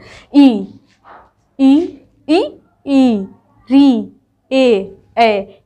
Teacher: ये जितने भी है जीभ के आगे भाग से बोले जाते हैं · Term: अग्र स्वर